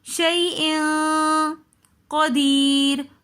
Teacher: دو زیر کی تنوین کے بعد اخفا کے حروفوں میں سے قاف آ رہا ہے تو اس لیے ہم یہاں پر غنہ کریں گے